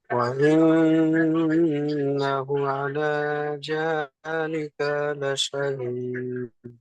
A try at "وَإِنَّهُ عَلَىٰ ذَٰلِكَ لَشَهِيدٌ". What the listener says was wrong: একটা ছেড়ে গেছে, এখানে হু টান হবে। এই ওয়াইন্নাহু আলা যালিকা লাশাহিদ। লাস্টে দাই কি, দাল হচ্ছে হুরুফে কলকলা, কলকলা করতে হবে। শাহিদ।